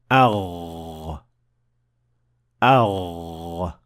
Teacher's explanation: You should definitely feel some vibration on your throat. So the root of the tongue is raised to the point of almost connecting to the farthest area of the soft palate, producing the Ghain.